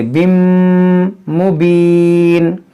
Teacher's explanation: किता बिम, इसको बिन नहीं पढ़ेंगे, बिम मुबीन।